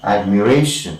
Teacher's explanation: the first syllable is taking secondary stress